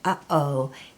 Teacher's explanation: you completely close off the back of your mouth between those two sounds, and that's the glottal stop.